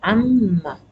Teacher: This noon gets mixed up with meme because of the tajweed rules. It's changed to meme amma, and the alif long vowel is deleted.